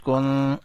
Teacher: نون کو چھپایا، نون کے اوپر اخفا کیا